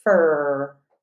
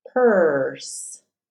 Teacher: so we lose that vowel we just hear that R sound